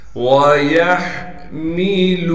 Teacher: وَيَحْمِلُ عَرْشَ وہ کو بغیر کھینچے پڑھیں گے۔ یا کو ہا سے ملا دیں گے اس لیے کہ ہا ساکن ہے اور ہا کو صاف کر کے گلے سے نکالیں گے